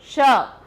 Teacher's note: जीभ जो है वो किससे टच कर रही है? हमारी नीचे तालू से टच करती है, तब शा बनता है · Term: तालव्य